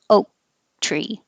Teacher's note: You won't hear the K if the next word is a consonant like oak tree. My tongue goes up to the K position, oak tree.